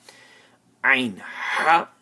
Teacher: These two letters come out from that part of the throat which is in the middle.